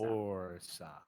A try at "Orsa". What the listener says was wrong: with that much R. It goes away. It literally goes away. Orsa. Orsa. Orsa.